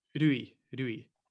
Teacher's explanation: That's the R is quite difficult in Japanese, as with many languages, they all have like a different R. So it's kind of like a mixture of l, d, and R all into one sound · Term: Japanese R